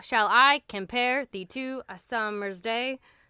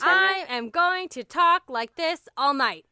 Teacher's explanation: 10 syllables with the emphasis placed on the second syllable